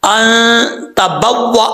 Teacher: नून साकिन का इख्फा होगा, एक अलिफ की मकदार गुना किया जाएगा। अब ता जो है ये बरीक है, इसका मखरज पहले कई दफा बता चुका हूं, जुबान की नोक ऊपर वाली दांतों की जड़ों से लगे तो ता पढ़ा जाता है बरीक, ता ता।